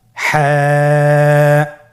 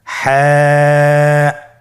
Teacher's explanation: হা হরফটি উচ্চারিত হবে কণ্ঠনালীর মধ্যখান হতে। গলা চিপে ধরে আপনি উচ্চারণ করুন।